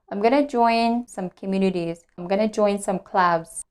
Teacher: I'm going to join, instead of saying going to, I reduce and I say gonna.